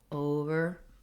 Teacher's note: If I say over or under by itself, then the main stress is going to be on that first syllable.